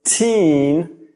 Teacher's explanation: when you say the word teen, your mouth closes more and your tongue comes forward and moves up higher. If you're saying it correctly, teen, you'll probably feel the sides of your tongue touching your teeth.